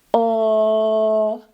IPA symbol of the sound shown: ɫ